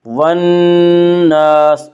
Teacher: والناس الف مدہ، الف ہمیشہ مدہ ہوتا ہے، الف سے پہلے ہمیشہ زبر ہوتا ہے، الف مدہ کو 1 الف کے برابر کھینچ کر پڑھیں گے